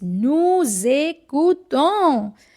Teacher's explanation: Again, S will change its sound from S to Z.